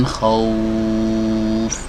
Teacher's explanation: Nah, khauf ini ketika kita membaca huruf waw naik, ya, pangkal lidahnya naik, kemudian bibirnya maju dan pita suaranya digetarkan